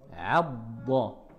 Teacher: la lettre Dad aussi remplit la bouche et est difficile à prononcer car tout le côté de la langue vient toucher les molaires. Vous sentez que ça, il faut que ça touche les molaires.